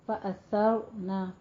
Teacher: سا میں سیٹی کی آواز نہیں آنی چاہیے